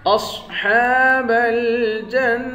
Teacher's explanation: اصحاب الجنہ، جیم کو نون مشدد کے ساتھ ملا کر یہاں غنہ کریں گے